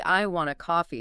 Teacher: But if you say, "I want a coffee," stressing want, you're emphasizing the desire itself, how much you want it.